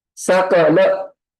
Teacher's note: Sa is short, Ka is short, La is short. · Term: Rasva